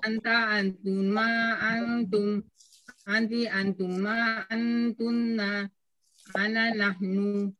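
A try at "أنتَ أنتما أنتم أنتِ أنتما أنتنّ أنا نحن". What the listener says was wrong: Nah, bagus.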